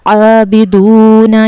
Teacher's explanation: عابدون، یہاں پر ہم نے عین کے مخرج کا خیال رکھنا ہے، واو مدہ کو کھینچ کر پڑھنا ہے، اور نون متحرک ہے تو جلدی پڑھا جائے گا